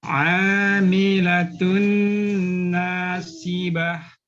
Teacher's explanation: Hati-hati nasi, tebalkan ya sa-nya. Jangan nasiyah.